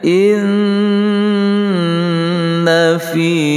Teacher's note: Inna fi, nun yang bertasydid, yaitu wajibul gunnah. Makna wajibul gunnah, wajib mendengungkan dua harakah di sini.